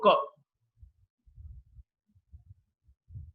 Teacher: There's a lot of, when the air passes, there is no vibration. It's a velar sound because the back of the tongue touches the velum or the soft palate. This is the second criteria for us, the place of articulation.